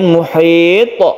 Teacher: Kemudian muhit, qalqalanya jangan lupa, to ini termasuk huruf qalqalah atau huruf yang memantul